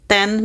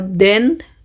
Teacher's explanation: T is voiceless and D is voice. Both consonants are alveolar plosive, meaning they are made with the tip of the tongue touch the alveolar ridge. But D uses the vocal cords.